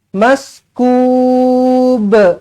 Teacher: nampak dekat belakang ada huruf ba, huruf qalqalah, lantunkan qalqalah kubra.